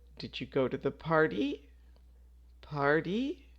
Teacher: for yes or no questions, we use a rising intonation, which means that your voice goes up at the end